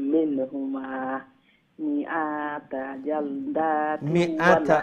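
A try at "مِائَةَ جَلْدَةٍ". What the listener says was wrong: মিআতা হামজা জবর আ শর্ট করবা, মিআতা জালদা।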